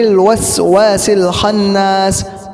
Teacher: خناس اس کے اندر گنہ کریں گے اور سین کو صحیح سے ادا کریں گے